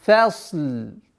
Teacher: Фа мягкое, сад твердое. И уходим на лям мягкое.